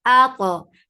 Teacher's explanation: To will get sifa of qalqala. It has itbaq. It is heavy.